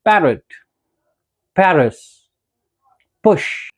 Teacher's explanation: apart from that, प, जैसे इन पैरट, पैरिस, पुश, ये सारे साउंड्स, प वाले साउंड्स भी बाइलेबियल है क्योंकि इसमें दोनों लिप्स इन्वॉल्व होते हैं